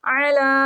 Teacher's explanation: عین ہلکی لیٹر ہے، گلے کے درمیان والے حصے سے ریڈ ہوگا